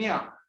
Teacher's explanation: न्या में भी तालव्य तालु यूज हो रहा है और साथ में नेसल साउंड नासिका यूज हो रही है